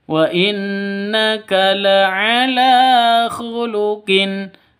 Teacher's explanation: la panjang dua ketukan karena ada Alif berdiri ada tanda berdiri di atasnya lam maka dibaca panjang dua ketu dua ketukan sama-sama mad asli ya